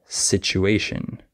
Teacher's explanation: you it's pretty easy to fix also certain letter combinations like the TU can be pronounced CH sometimes like situation